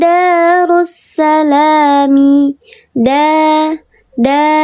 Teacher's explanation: dibacanya panjang dua harakat namanya mad th'i